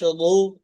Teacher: আওয়াজটা মোটা, অর্থাৎ মুখটা গোল করে আওয়াজটা মোটা করে বের করতে হবে। রু।